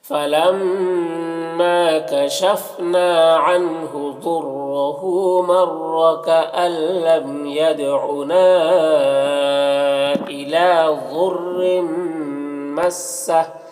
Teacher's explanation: اور تنوین کے بعد میم حروف یومن میں سے تو تنوین کو میم سے ملا کر غنہ کے ساتھ پڑھیں گے، اس کو ادغام ناقص کہتے ہیں